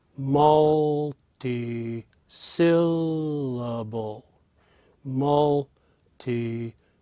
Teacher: in that word we have three places where the voice goes a little higher and two places where the voice is at its · But note that between mult, syll, and bull, that even though they are 3 high pitches, the middle one, in this case, syll, is the highest pitch. · in that word we have 3 places where the voice goes a little higher and 2 places where the voice is at its lowest. So in the word multi-syllable, you have mult, syll, and bull being the higher pitches, and the second and the fourth syllable, multi-syll, tia, being the lowest. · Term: melody